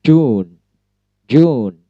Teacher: ujung lidah bertemu dengan dinding mulut bagian atas belakang gigi atas